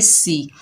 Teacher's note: सीन के नीचे ज़ेर बगैर कच्चे पढ़ेंगे, सीन सख्ती और सीटी वाला हरूफ है